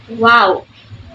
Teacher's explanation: the back of the tongue is slightly raised toward a soft pallet called the Vellum but does not make contact the tongue remains relaxed as the focus is primally on the